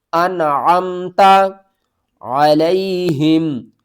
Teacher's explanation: تا انعمتا نون کو آپ نے ظاہر کر کے پڑھنا ہے عین کو آپ نے حلق کے درمیان والے حصے سے ادا کرنا ہے اور عین کو میم کے ساتھ بھی ملانا ہے انعمتا علیہم